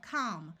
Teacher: the a will have its broad sound of a and the L will be silent